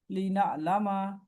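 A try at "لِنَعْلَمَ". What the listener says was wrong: लीना आलामा। नहीं, माँ को क्यों आप खींचे, अलिफ लगा रहे हैं लीना आलामा।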